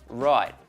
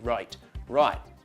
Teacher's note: you notice that the T has disappeared from the end of the word this is called a glottal stop and is very common in Australia